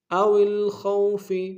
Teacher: او الخوف میں خوف کو موٹا ادا کریں گے، واولین بغیر کھینچے پڑیں گے